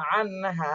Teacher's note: এরপরে আইন নুন জবর আন, হা আলিফ জবর হা, আন হা, নুন সাকিনের পরে ইজহারের হরফ হা আসছে, এজন্য স্পষ্ট করে পড়তে হবে।